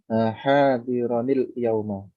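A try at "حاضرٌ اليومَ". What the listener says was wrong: Laisa hadira. Yauma. Nah, kalau mau dibaca wasal hadirunil yauma. Doma ya. Karena apa? Rafa. Khabar la'alla.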